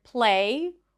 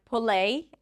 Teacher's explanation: we might hear something like 'puh-lay', adding a vowel in between.